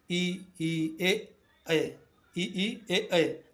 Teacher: जीभ का अगला भाग सक्रिय होता है। इ ए इ ई ए ऐ अग्र स्वर होते हैं।